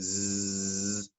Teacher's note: if you say the word z, you can feel the vibration on your Adam's apple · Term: voiced